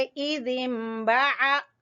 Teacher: बा को छोटा पढ़ेंगे और आइन को वस्त हलक से अदा करेंगे